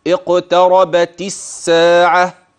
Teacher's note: فاللام مع كتابتها لا يتلفظ بها